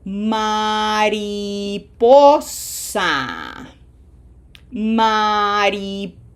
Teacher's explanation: It ends in a vowel. Therefore, pronunciation emphasis is in syllable number two. Okay? Counting from the right to the left.